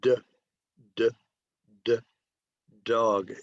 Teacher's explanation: the initial sound in dog is d, d, d, dog. It's voiced. Very good, very good.